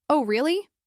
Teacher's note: with a flat voice, they're probably just asking for more information